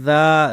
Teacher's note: ذال کھڑی زبر ذا، ذال کو سافٹ بھی پڑھنا ہے، اپنے زبان کی نوک کو اوپر والی دو دانتوں کناروں پر جب لگاتے ہیں ذا سافٹ نکلتی ہے، ٹھیک ہے، اور کھڑی زبر ہے تو اس کو کھینچیں گے۔